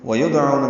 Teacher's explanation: ویدعون میں دال ساکن پہ قلقلہ